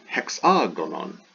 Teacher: So for example, hexagon, there's definitely a sound accompanying that epsilon. So that initial vowel, that initial epsilon, there's that aspirate sound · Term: rough breathing